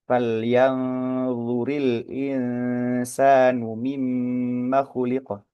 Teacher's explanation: memang mau ke arah huruf d tetapi memang belum nempel secara sempurna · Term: ikhfa